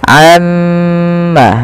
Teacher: tahan dahulu gunnahnya atau bunyi suara mimnya sepanjang 2 harokat. Amma baru dilepaskan.